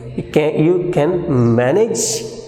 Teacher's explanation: The speaker is doubtful about the listener's ability or capability. Here his doubt is presented by the use of falling and rising tone.